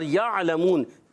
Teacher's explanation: عین کو ادا کریں گے حلق کے درمیان والے حصے سے